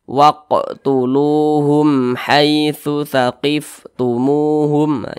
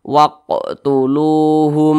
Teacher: Dibaca jelas, tidak berdengung, jadi dibaca pendek saja. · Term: izhar syafawi